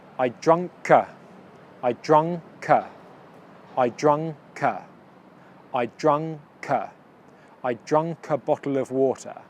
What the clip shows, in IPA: draŋ. kə